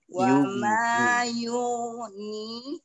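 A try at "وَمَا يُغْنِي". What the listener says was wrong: Nah, tapi jangan mantul, kayak itu mantul. Tetap ngalir dan tebal. Coba lagi.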